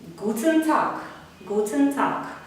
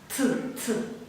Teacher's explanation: Т по-німецьку ми вимовляємо криху з придиханням.